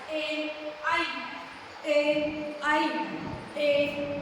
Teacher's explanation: उसके बाद आता है कंठ तालु, यानी कंठ और तालु से मिलकर बनने वाले स्वर